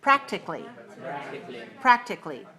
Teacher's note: stress the first syllable on this word